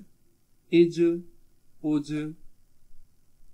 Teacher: اس کو بھی قلقلہ خوب ظاہر ہوگا، آواز موومنٹ ہوگی.